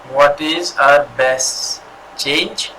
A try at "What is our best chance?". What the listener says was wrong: Chance, sorry, it's with C. Chance.